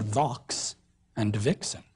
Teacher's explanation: sounds that were pronounced like F or S would have been pronounced in Southern English like a V or a Z